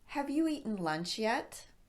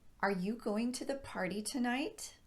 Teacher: questions can be answered with a yes or a no response so we use an upward swing in our pitch at the end of the question